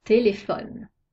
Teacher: la syllable ne est muette on accentue la syllabe précédente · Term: accent tonique